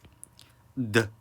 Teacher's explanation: 치조음에서 파열음, 혀를 붙였다 띄면서 나는 소리는 디귿이에요. 드 이런 소리가 등장을 하게 되는 거고요.